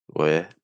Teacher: notice that I don't have to round my lips. I can say we. But when I do that, it can make that W sound a little bit strong and it can start to have an impact on my vowel.